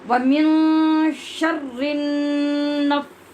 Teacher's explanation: شرن کا نون مشدد ہے، یہاں غنہ ادا ہوگا جو اپنے مخرج سے جم کر ادا ہوگا ، اور من یہاں غنہ ہوگا لیکن نون پر اخفا ہوگا